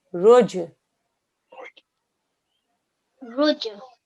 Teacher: we got to do a bouncing sound on the jim.